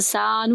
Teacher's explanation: سین کو ایک الف کے برابر لمبا کریں گے